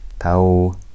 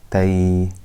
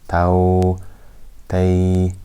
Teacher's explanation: whenever a fatha is followed by a waw or a ya with a sukoon on it, this is called mad leen. We have to stretch it for 2 harakat.